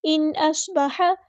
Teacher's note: نون ساکن کی آواز یہاں ظاہر ہوگی، اظہار ہوگا.